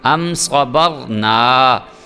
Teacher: یہ کہ صا کو بھی موٹا صاد کو بھی موٹا کر کے پڑھنا ہے اور با کے بعد را جو ہے وہ بھی پر کر کے پڑھے گا، را ساکن ہے